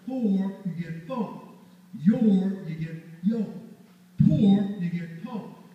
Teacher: The word for, your, pour, and floor won't have an R at the end.